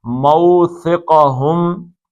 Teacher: یہ سا جو ہے سین نہیں نکالنا، سیٹی نہیں بجنی چاہیے